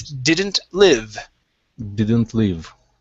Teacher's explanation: So we're looking at the short I sound. So instead of didn't leave, it's didn't live.